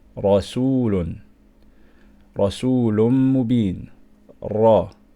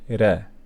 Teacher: The second example is when we have a fatha on top of the ra. We're going to pronounce ra strong. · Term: Tafkheem